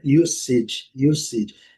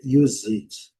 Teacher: o S com som de S, mas alguns dicionários também trazem o S com som de Z